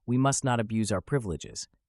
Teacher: When used as a verb, it's pronounced abuse, with stress on the second syllable.